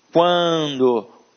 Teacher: Então, esse A aqui ficou nasalizado.